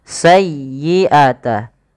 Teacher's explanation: Pada lafal sayyi tekan di huruf ya-nya karena dia ya tasdid dan lembutkan